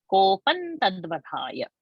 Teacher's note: In ta varga's anunasik is na. So the previous anuswara is na.